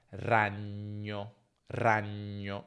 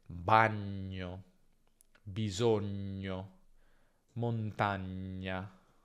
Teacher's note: in italiano standard, ok, tra due vocali gn è sempre lungo. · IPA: /ɲ/